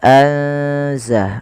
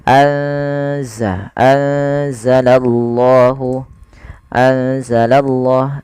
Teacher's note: cara membacanya yaitu memasukkan nunnya atau menyamarkan nunnya kepada huruf Zai ya anza langsung kepada makhraj daripada huruf z anza anzalallahu anzalah